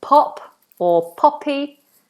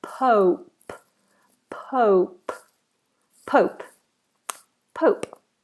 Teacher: Almost as if there's a little W there. Imagine a little W.